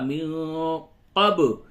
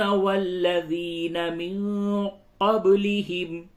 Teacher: نون ساکن کے بعد قاف اخفا ہوگا، من قب با میں قلقلہ ہوگا، با ساکن ہے یہاں پہ قلقلہ ہوگا.